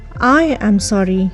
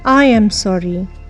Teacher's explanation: Your I gets the stress, that is the rising intonation, and sorry gets a falling intonation. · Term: falling rising intonation